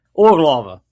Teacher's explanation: Put the stress on the first syllable and you're close.